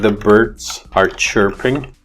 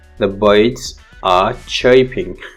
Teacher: sometimes bugs bunny pronounce the sound ra as ya